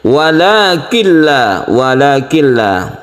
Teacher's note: La gunnah itu artinya tidak berdengung. Jadi langsung tanpa dipanjangkan kita langsung tasydid ke lam. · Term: idgham bila gunnah